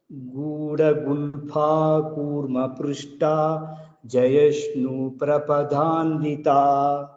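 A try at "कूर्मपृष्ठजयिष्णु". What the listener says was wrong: After Shtha, there is no Dirgha. Kurma Prushtha Jayishnu is continuous. Gudha Gulpha Kurma Prushtha Jayishnu Prapadandita. Prushtha is not there, it is Prushtha Jayishnu.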